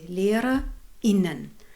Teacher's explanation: In the inclusive form in German, like LehrerInnen, you make this glottis stop.